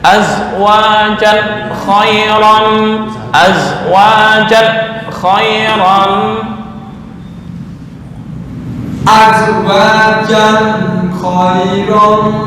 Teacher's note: Tanwin bertemu kha adalah idhar halki, idhar nggak boleh dengung.